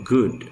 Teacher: G is a voice velar plosive, as in good.